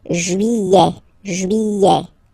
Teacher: don't pronounce this final T, E-T here at the end